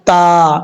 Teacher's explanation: اس کا مخرج زبان کی نوک اوپر والے تالوں کی، اوپر والے دانتوں کی جڑوں سے لگے تو تا پڑھا جائے گا